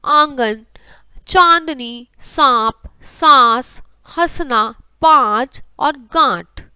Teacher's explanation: इसका उच्चारण करते समय हमें जो सांस है केवल नाक से निकलता है, जैसे चंदन, नरेंद्र, पंख, मंगल, नींद और कंकर। अनुनासिक का उच्चारण करते समय जो मुख और नासिका है दोनों से मिलकर प्रयोग होता है